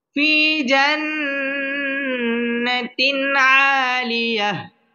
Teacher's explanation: পড়তে হবে ফি জান্নাতিন তিন এটা হচ্ছে তানভীনের বামে আইন আসছে আইন ইজহারে হরফ এখানে গুন্নাহ ছাড়া স্পষ্ট করে পড়তে হবে